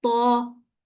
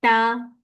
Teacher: जुबान को नीचे रखने से हमारी आवाज बारीक निकली और हमारा वर्ड वहां पर निकला ता।